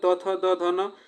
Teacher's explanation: दंत से उच्चारण होते हैं